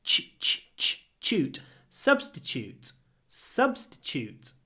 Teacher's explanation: when I say T-U-T-E at the end, I say ch. Because very often T-U is pronounced ch.